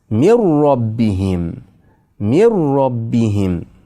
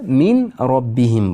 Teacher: Nun harfni ro harfni ichiga kirgizib yuboramiz.